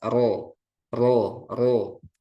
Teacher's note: makhrojnya di awal punggung ujung lidah dengan gusi gigi seri atas Terus dia memiliki takrir tapi takrirnya jangan berlebihan · takrir ya bergetar Jadi tapi enggak boleh berlebihan ro ro itu berlebihan ro ro ro ya ro maksimal dua